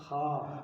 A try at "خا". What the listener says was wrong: خا نہیں، خو موٹا۔ جی،